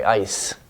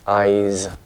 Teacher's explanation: even at the end of words we keep that voicing